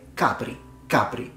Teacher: so the stress is on the ah sound not at the end